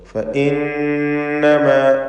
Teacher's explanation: ശദ്ദുള്ള നൂനിന് ഉന്നത്ത് കൊടുത്തുകൊണ്ട് ഫഇന്നമാ എന്ന് ഉച്ചരിക്കുക. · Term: നൂൻ മുശദ്ദദ